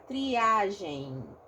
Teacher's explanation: Como é um caso de ditongo, não é um I forte, é um I mais fraco. E aí, o ditongo com o I, eu represento como se um Y fosse, tá?